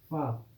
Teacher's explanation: दांत और होठ मिलेंगे तभी आप बोलोगे